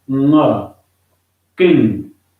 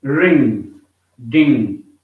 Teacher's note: it has no g sound at the end of it. The final sound is not g; it is this sound, ng, king.